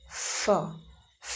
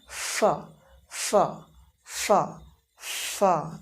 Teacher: For example अगर मुझे कहना पड़े एफ, यहाँ पे ध्यान से देखिएगा कि एफ साउंड बोलने के लिए हम लोग क्या करते हैं, अपने लोअर लिप का इस्तेमाल करते हैं और अपर टीथ का इस्तेमाल करते हैं. लोअर लिप को हम ले जाएंगे, अपर टीथ से टच करेंगे. We will touch our lower lip to upper teeth, ऐसे फ और एक हल्की सी एयर को रिलीज करते हैं, बोलते हैं फ.